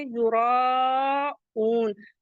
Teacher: را کو ہیوی پڑھیں گے، زبر کی وجہ سے مد متصل آ رہا ہے تو اسے کھینچیں گے